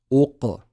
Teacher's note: we've got qaf with sukoon. So make sure we do the qalqala.